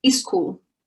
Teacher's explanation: we put a vowel in front of the word so school becomes a school that's called vowel insertion when we put a vowel in front